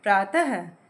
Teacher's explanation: अब आता है विसर्ग। किसी व्यंजन के बाद यदि विसर्ग लगा हो तो उसका उच्चारण अह की तरह होता है